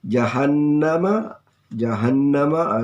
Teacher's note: jahannama ada nun gunnah, bacaan mendengung